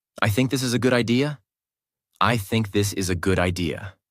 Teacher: let your voice fall at the end of the sentence. This tells the listener, I am sure. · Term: falling tone